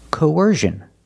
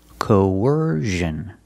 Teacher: Put the stress on the second syllable.